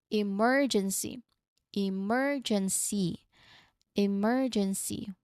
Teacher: remember to stress that second syllable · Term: syllable stress